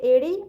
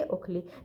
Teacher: जिनके उच्चारण में मुंह आधा बंद रहता है, लगभग आधा बंद रहता है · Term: अर्ध समवृंत स्वर